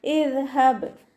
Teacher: ബ കൽക്കലയുടെ ലെറ്റർ ആയതുകൊണ്ട് ഫുൾ സുക്കൂന് കൊടുക്കുക